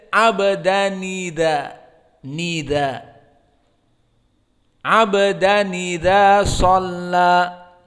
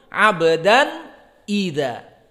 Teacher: Di qiraah Warsh idza hamzahnya dihapus, harokat kasrohnya idza ini pindah ke nun as-sakinah soronun mutaharrikah bi kasroh.